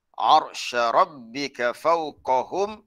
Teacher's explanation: Hum mim mati bertemu dengan ya, itu izhar syafawi kena nyata jelas pada mim yang dimatikan. Maksudnya kena rapatkan bibir mulut.